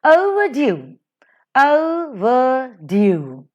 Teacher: As we have in the example, overdue, overdue. O is unstressed, ver is unstressed, and due is stressed. · So this is a foot with three syllables in which first two syllables are unstressed, whereas the third syllable is stressed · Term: anapaestic, anapaest